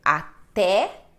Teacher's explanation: A forte é té, não é o a, não é até, mas é até, assim como vovó, né?